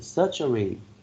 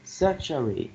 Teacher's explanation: 3 syllables with the first syllable receiving the stress.